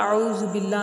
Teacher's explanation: اعوذ باللہ میں لفظ اللہ باریک پڑھا جاتا ہے کیونکہ اس سے پہلے والا حرف با کے نیچے زیر ہوتی ہے